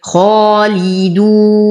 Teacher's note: وهم فيها، ألف ساكنة ما قبلها مفتوح فهو من طبيعي حركتين. خالدون، نفخم الخاء على درجات التفخيم فهي مفتوحة وبعدها ألف